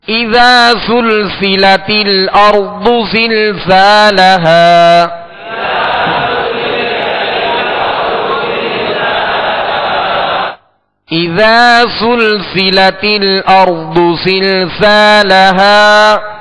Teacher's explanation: زلزا دونوں زا میں سختی سیٹی کی آواز پیدا ہوگی